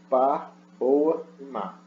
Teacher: P, B e M são bilabiais